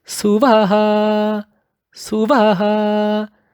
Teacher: That Vaha at the ending is brought at a high level, high pitch.